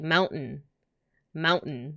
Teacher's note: I don't actually say the T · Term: glottal stop